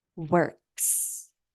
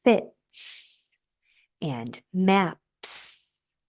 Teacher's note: the S is a non vibrating voic less sound like T the S will sound like the normal nonvibrating s sound